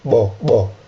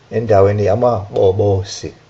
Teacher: Take note of the bo sound, the implosive sound